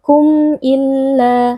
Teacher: Cara membacanya adalah dengan mengucapkan bunyi mim dengan jelas tanpa bunyi ghunnah yang panjang . Illa, la is mad thabi'i. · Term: izhar syafawi